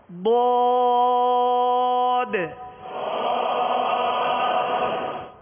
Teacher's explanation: اس کا مخرج ہے زبان کی کروٹ اور اوپر کی داڑھوں کی جڑ سے جو ہے یہ ضاد ادا ہوتا ہے